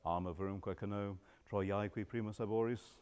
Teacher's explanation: I do give a little bit of stress on the A of Troiae, knowing perfectly well that the prose accent is on the first syllable. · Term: ictus